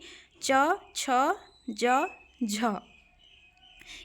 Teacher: कि वर्गीय व्यंजन होते हैं वे सारे ठीक है स्पर्श संघर्षी मुख विवर में हवा के रोकने के बाद घर्षण के साथ बाहर निकलने को स्पर्श संघर्षी कहते हैं